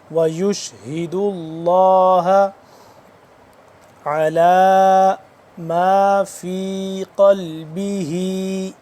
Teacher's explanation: دال کے اوپر پیش ہے، اس کے بعد لفظ اللہ، اس کو ہم پر کر کے پڑھیں گے